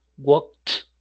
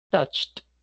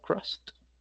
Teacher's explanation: Si usted se toca la garganta, no va a sentir vibración. Sonido sí hay, vibración es la que no hay.